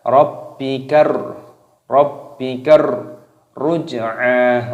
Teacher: Rabbikar, Rabbi baknya berharokat tasydid ini dimasukkan, diidghamkan dibaca Rabbi. Rabbikar, alif lam samsiyah ra-nya berharokat tasydid dibaca Rabbikar.